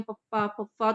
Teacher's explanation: ਕਹੀਏ ਵੀ ਜਿਵੇਂ ਹੋਠੀ ਧੁਨੀਆਂ ਆ ਜਾਂਦੀਆਂ ਹੈਗੀਆਂ ਪਪ ਪਫ ਤੋਂ ਲਿਪਸ ਦੇ ਨਾਲ ਜਿਹੜੇ ਹੈ ਉਹ ਸਪਰਸ਼ ਹੁੰਦੇ ਆਪਸ ਦੇ ਵਿੱਚ ਤੇ ਫਿਰ ਹਵਾ ਬਾਹਰ ਆਉਂਦੀ ਹੈ